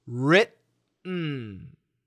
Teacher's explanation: We stop the T and then we do the N. The tongue never moves.